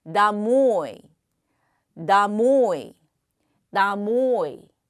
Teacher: 액센트가 뒤에 있기 때문에 우다리 앞에 있는 오는 아로 읽죠 그래서 나모 역시 액센트를 받는는 높고 길고 강하게습니다 다모이 나모이 나모이 · 역시 액센트를 받는 오는 높고 길고 강하게 읽습니다